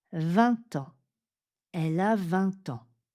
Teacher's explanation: Quand le mot suivant, quand le nom suivant commence par une voyelle, on va faire une liaison en t.